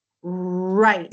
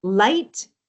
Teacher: with the R position, your tongue is going to pull back. You don't touch the top and your lips are slightly rounded. On the L sound, your tongue does touch the top.